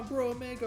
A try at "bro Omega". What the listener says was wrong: It sounded like you said that because you barely left a gap between Bro and Omega.